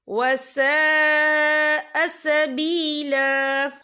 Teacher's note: ये देखिए वसा, यहाँ खालिफ से पहले जबर है और इस पर मद भी है। ये मद जो है मद मुत्तसिल है, इसकी मिकदार 4 हरकत के बराबर है, तो हम इसे 4 हरकत के बराबर खींच के पढ़ेंगे।